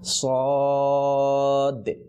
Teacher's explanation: সদ এবং দদের ক্ষেত্রে একটু ধাক্কা, অর্থাৎ শেষে দালটাকে উচ্চারণ করতে হবে